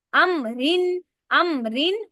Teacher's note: अमरिन रा को बारीक कर रही हूं।